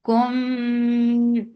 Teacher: This is ikhfa shafawi, so you are keeping the sound in your nose.